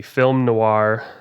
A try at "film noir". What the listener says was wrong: Sorry, no. There is an R in that word. Noir. No, it sounds like no R, but there is an R in the word. It's Noir.